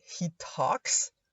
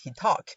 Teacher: the final S at the third person singular is very often removed because this S specifically creates clusters of consonants like he talks.